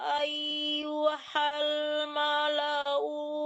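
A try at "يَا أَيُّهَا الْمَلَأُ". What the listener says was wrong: U-nya tidak panjang. Kan udah dibilang tadi tanda dhammah, kalau waw-nya tidak mati, jangan dipanjangkan. Qala ya ayyuhal mala'u Nah, dicepatkan U-nya.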